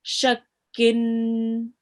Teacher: The sheen is joined on to the kaf with a shadda and it bears a kasratain. Okay, remember with the kasratain, it has a nasal sound which is prolonged for a little bit